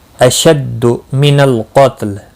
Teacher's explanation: اشد من القتل لام ساکن کو ہلانا نہیں۔ قاف مستعلیہ ہے، پر پڑھا جائے گا، لام ساکن رہے گا وقف کی صورت میں